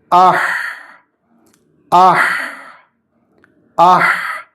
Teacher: കാറ്റ് പുറപ്പെടണം ശബ്ദം നീളണം നാവ് അടിയിലേക്ക് താഴ്ന്നിരിക്കണം അണ്ണാക്കുമായി അകന്നിരിക്കുകയും വേണം